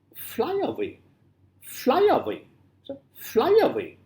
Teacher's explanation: stressed plus unstressed plus unstressed three syllables are there but first one will be stressed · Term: dactyl